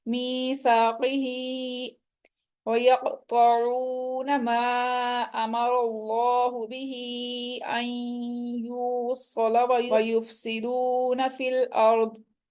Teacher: यक़तऊन में देखिए क़ाफ एक तो मोटे हरूफ में से अब मुस्तालिया है, इसके साथ जब ये साकिन हो रहा है तो इसके ऊपर हम कलकला कर रहे हैं। चूंकि क़ाफ जब साकिन हो जाता है तो इसके ऊपर कलकला किया जाता है। तो क़ा को हम बोल्ड पढ़ेंगे, मुस्तालिया हरूफ में से है, हम इसको मोटा पढ़ेंगे।